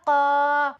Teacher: حرف مد کو ایک الف کے برابر کھینچ کر پڑھیں گے